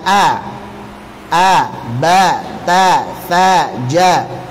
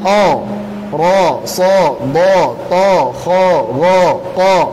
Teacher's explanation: Untuk fathah pada huruf tipis bunyinya a, ba, ta, tha, ja. Untuk fathah pada huruf tebal bunyinya o, ro, so, do, to, kho, ro, ko.